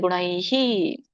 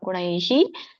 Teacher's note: ಸೊ ಕೊನೆಗೆ ಹಿ ಅಂತ ಉಚ್ಚಾರಣೆ ಮಾಡಬೇಕು ಐ ಸ್ವರ ಕೂಡಿದಾಗ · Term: ವಿಸರ್ಗ